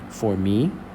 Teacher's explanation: Me is a little bit louder, a little bit more drawn out. So that's the stress syllable. For is unstressed.